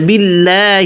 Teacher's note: آگے باللہ، بل کا با کا جو زیر کسر اس کو بل پڑھنا ہے، بہت سے لوگ بل پڑھتے ہیں، بیل، بیل، بیل، بیل نسا نہیں کرنا، یا بیل، بیل، اس کو بھی تھوڑا سا کھینچ دیتے ہیں، ایک دم اس کو ملانا ہے، باللہ۔ آگے لام پر جو ہے تشدید ہے تو اس تشدید کو پکڑ کے بولنا ہے، باللہ۔ آگے ہی اس پہ بھی زیر ہے، ہی، باللہ۔